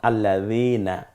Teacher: দাল নরম আওয়াজে, যেমন আল্লাযীনা। তো দালটা বলতে হলে জিহ্বার আগা এবং সামনের দাঁতের আগার সাথে মিলিয়ে উচ্চারণ করলে এটা নরম হয়ে যাবে